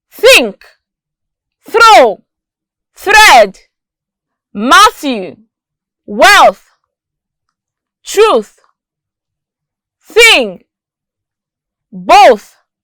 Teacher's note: the sound is a voiceless sound that means there is no vibration in the voice box when we pronounce it